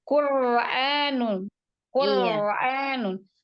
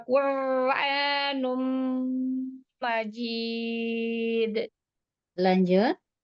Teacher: huruf takrir ya. Digetar rohnya dilatih ya